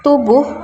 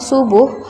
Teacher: es termasuk kedalam alveolar fricative